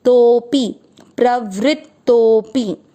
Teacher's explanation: प्र का अर्थ हुआ प आधा र पूरा, व्री का अर्थ हुआ व आधा, और री से ऋषि की मात्रा वी आर आए, प्रवृत्त, आधा त है, प्रवृत्त, और फिर है तो के बाद में अवग्रह, आपको तो की मात्रा को लंबा खींचना है